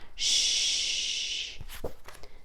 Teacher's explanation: this is a continuous sound as long as you have air you can keep making this sound